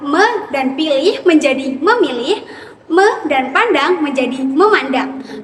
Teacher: Pada contoh ini, bunyi P berubah menjadi M. Keduanya merupakan bunyi bilabial yang dihasilkan oleh kedua belah bibir. Perubahan ini terjadi karena bunyi M lebih mudah diucapkan ketika berada setelah prefiks me.